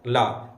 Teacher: ऐसा व्यंजन वर्ड जिसको बोलेंगे तो वायु जो होगी जीभ के बगल से निकलेगी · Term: पार्श्विक व्यंजन